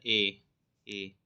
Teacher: कंठ और तालु से यह दोनों से बोला जाता है ए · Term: कंठ तालु